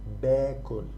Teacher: In the present tense we don't pronounce it like أنا بأكل. We pronounce it more like باكل. It becomes like a long vowel.